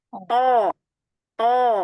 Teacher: Makrosnya dari ujung lidah bertemu dengan pangkal gigi seri atas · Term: huruf to